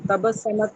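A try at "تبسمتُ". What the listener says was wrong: नहीं नहीं, देखे ना, ये आप मीम को जो है ना, क्या है कि आप मीम को आप कर दें, वो साकिन कर दें मीम को।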